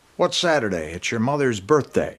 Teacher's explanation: So there's no break. The A from Saturday links right into the I from it's Saturday. It's your mother's, one stressed syllable there, and then another one on birthday.